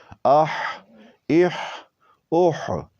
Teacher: تو یہ ہا وسط حلق سے سپیڈ کے ساتھ آواز نکلے گی